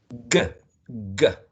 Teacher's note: G is very similar to K. Both of them are plosive and velar. The first one is voiced.